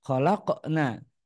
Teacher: Ketika membaca lafadz laqad khalaqna, maka huruf qaf sukun dia derajat qalqalahnya sangat tipis.